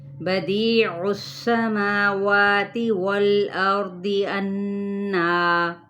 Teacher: عین کی پیش کو سین کے ساتھ ملائے ، سین پہ سیٹی کو واضح کریں، سماواتی، ما اور وا